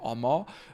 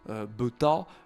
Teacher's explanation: très souvent, cette voyelle peut être un petit peu confondue avec un O ouvert, mais c'est bien un A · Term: voyelles ouvertes